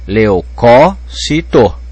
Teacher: a tonicidade tá caindo na terceira sílaba de trás para frente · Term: proparoxitono